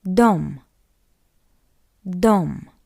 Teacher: We have O after D, that's why D is hard.